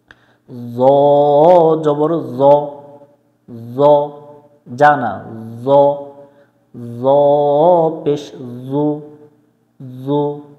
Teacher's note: জ অক্ষর জিহ্বার আগা থেকে মোটা করে পড়তে হয়।